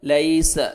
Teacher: لیس یا لین ہے، نرمی سے ادا کریں گے، یا ساکن سے پہلے زبر ہے